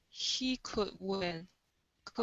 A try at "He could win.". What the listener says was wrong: Okay, yeah, pronounce that D instead of could win. It's could win. So you want to say could win.